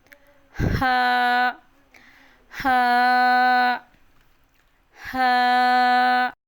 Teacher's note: ہا حلق بالکل سینٹر سے پروناؤنس کیا جاتا ہے، حلق کے بالکل درمیان والے حصے سے ہا ادا ہوتا ہے